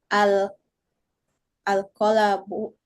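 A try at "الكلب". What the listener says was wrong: K itu K, huruf kaf. Al-kal, al-kalbu.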